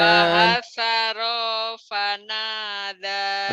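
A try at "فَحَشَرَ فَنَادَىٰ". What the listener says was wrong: rohnya pendek diulang lagi. Fahasyara fanada.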